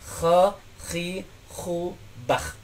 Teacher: Bagiannya adalah dari akar lidah, ya, bertemu dengan al-lahat atau lak-lakan atas.